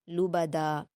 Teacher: دال پر 2 زبر کی تنوین ہے تو اس کو وقف کرتے ہوئے ایک زبر ہٹ جاتا ہے، ایک زبر اور الف کے ساتھ پڑھا جائے گا